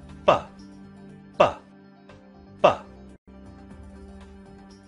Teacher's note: Did you feel a vibration with p or with b? You should have felt a vibration with b.